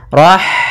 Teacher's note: kemudian Rahmani pada lafaz Rahmani ada H sukun maka di sini H mempunyai sifat yaitu sifat Hames maka alirkan nafas kita